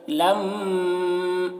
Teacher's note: میم مشدد ہے تو اسے یہاں پر غنہ کریں گے